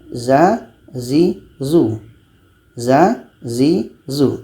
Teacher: Za ini letaknya pada ujung lidah menempel dengan bagian atas gigi seri bawah.